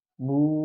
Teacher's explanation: ketika mengucapkan huruf wau maka mulut ya seakan-akan monyong Maksudnya ya membentuk vokal O iya di situ perbedaannya dengan huruf yang berharakat fathah dan kasrah